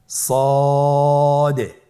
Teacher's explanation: জিহ্বার আগা সামনের নিচের দুই দাঁতের পেট ও আগার সঙ্গে লাগিয়ে উচ্চারিত হয়। · সদ হরফটি পুর হরফ। মোটা হরফ উচ্চারণ ক্ষেত্রে মোটা করে পড়তে হবে এবং উচ্চারণ করার সময় তিন আলিফ টেনে পড়তে হবে